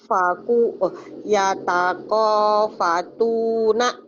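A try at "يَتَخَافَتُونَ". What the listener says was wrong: bukan yatako orang Jawa kho tuh kadang-kadang jadi ko jangan itu khair yatakho fatu yatakhafatuna yatakhafatuna kemudian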